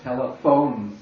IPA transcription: telɪfoʊn